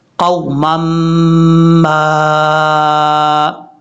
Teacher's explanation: میم کو میم کے ساتھ ملاتے ہوئے یہاں غنہ کرنا ہے ایک الف کی مقدار